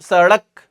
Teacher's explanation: सड़क जीभ ऊपर जा रही है और तुरंत फिर नीचे आ रही है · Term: उत्क्षिप्त व्यंजन